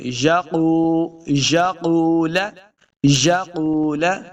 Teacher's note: این یقول، یقول، قاف پیش واو، واو مد ہے، اس کو دو حرکات لمبا کرنا ہے۔ قاف حروف مستعلیہ سے ہے، اس کو موٹا پڑھیں گے۔